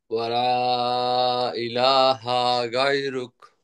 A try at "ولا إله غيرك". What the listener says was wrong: হা টান হবে না, ইলাহা এরকম টান হবে না। ওয়ালা, লার মধ্যে তিন আলিফ টানবেন। ইলা, এই যে খাড়া জবর আছে টানবেন। হা কোন টান টান টান টুন না, হা জবর হা, তাড়াতাড়ি। ওয়ালা ইলাহা গায়রুক।